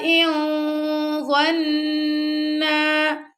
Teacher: أَن يَتَرَاجَعَا إِن ظَنَّا، اب یہاں پہ دیکھیں ظا پھر آ گیا یعنی کہ موٹا پڑے جانے والا لیٹر، تو یہاں پہ پھر ہم ہیوی اخفا کر رہے ہیں، تو ہماری پوری جو آواز ہے وہ ناک میں جا رہی ہے